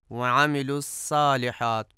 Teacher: الصالحات میں صاد کو سین پڑھا جاتا ہے